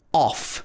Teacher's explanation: smooth rough and in cough the o-u-g-h is pronounced off with the o sound this is made at the back of your mouth at the bottom